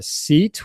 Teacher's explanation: seat which is very long e sound